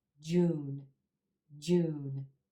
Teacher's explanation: consonant sound at the end of this word is voiced and when we have a voiced consonant at the end of short words like this you want to hold that vowel sound two beats